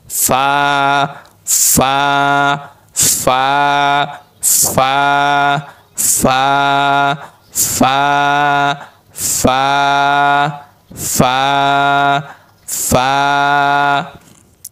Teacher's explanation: নিচের ঠোঁটের পেট সামনের উপরে 2 দাঁতের আগার সঙ্গে লাগবে